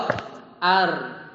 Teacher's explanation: Kalau yang rokhawah itu masih ngalir.